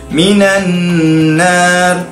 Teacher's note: Nun bertasydid, wajibal ghunnah, bacaan berdengung.